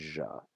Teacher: So the voiced equivalent of sh would be a zh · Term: zh sound